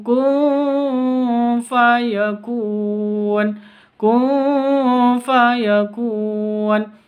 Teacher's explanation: Non sukun bertemu dengan fa samar didengungkan. Terus ya fayakun, mad arid li sukun, panjang boleh 2, panjang 2 harokat, 4 harokat, boleh 6 harokat.